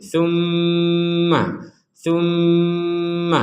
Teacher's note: ada mim bertasdid kita baca dengan dengung